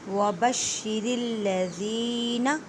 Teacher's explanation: شین مضبوطی کریں، شین کو 2 مرتبہ پڑھیں کیونکہ شین مشدد ہے، را کو باریک پڑھیں کیونکہ را کے نیچے زیر ہے، را کو لام مشدد کے ساتھ ملائیں۔